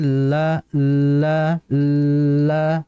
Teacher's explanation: ketika ujung lidah naik ke atas, suara itu lewat dari samping. Itu maksud dari sifat alhiraf, yaitu menyimpang atau bergeser yang harusnya lurus tapi lewat samping suaranya. · Ketika ujung lidah nempel ke langit-langit, sehingga udara suara itu kan nggak bisa lurus. Maka dia ngelewat samping. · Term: sifat al-inhiraf